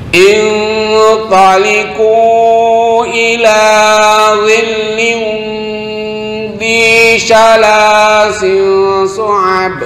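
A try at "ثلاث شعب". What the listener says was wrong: Salasi syu'ab. Bukan sin. Ini bukan tanwin. Fi syu'ab. Bukan si, tapi fi. Fa. Makhrajnya sama. Dha, dzal, fa. Itu satu makhraj. Ujung lidah dengan ujung gigi atas.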